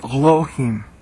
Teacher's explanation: when you hear Jews say Elohim, they're saying it from the back of their throat, the A, the Aleph.